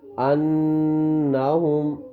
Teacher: غنہ ہوگا 1 سیکنڈ کے برابر نون کی آواز کو ناک میں چھپائیں گے